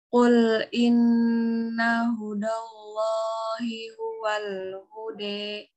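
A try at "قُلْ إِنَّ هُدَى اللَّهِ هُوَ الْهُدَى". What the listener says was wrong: Hude kan? Hude bukan. Kul hudallahi huwal hude. Bukan hude. Jangan samakan dengan D di bahasa Indonesia ya. Kalau D bahasa Indonesia kan hude gitu kan. Ini beda.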